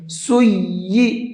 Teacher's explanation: اس یا کو بھی ڈبل کر کے پڑھنا ہے، تھوڑا سا رک کر کے